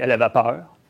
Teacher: Comme on aurait pu aussi diphtonguer, comme un Québécois aurait pu diphtonguer, elle avait peur, donc une diphtongaison du « e »